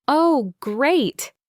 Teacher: with a slow, rising then falling intonation? That is sarcasm.